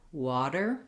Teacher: it'll be flapped, like in the word water, sounds more like a D.